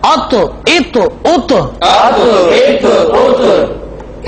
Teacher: آواز میں جنبش ہوگی اور آواز لوٹتی ہوئی نکلے گی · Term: حروف قلقلہ